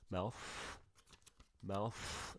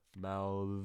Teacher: voiceless th, lots of wind